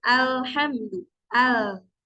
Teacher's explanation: lewat tengah karena terhalang oleh makhraj huruf lam itu sendiri karena si ujung lidahnya ini menempel ke e langit langit maka suaranya itu akan keluar dari samping-samping sebelah sini nah ke samping-samping sini nah itu yang dinamakan inhir